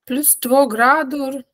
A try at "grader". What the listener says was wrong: Vänta. Grader. Grader. +2 grader. Du sa grador, sa du.